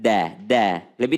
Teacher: kalau da itu ujung lidah bertemu dengan belakangnya gigi depan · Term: dal